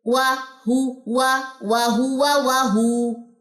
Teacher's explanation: یہاں پہ واو مدہ کا رول ہے, اسی لیے یہ ہو لمبی ہوئی ہے